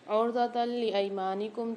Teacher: تا کے اوپر جو دو زبر آ رہے ہیں اس کے بعد لام مشدد آ رہی ہے، تو یہاں پر ہم ادغام بلا غنہ والا قاعدہ کریں گے، یعنی ہم یہاں پر غنہ نہیں کریں گے، ادغام کر کے پڑھیں گے۔